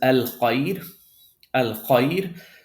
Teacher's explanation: if you see ya sukun right before the letter ra, right, then you're supposed to pronounce the ra light or with tarqiq.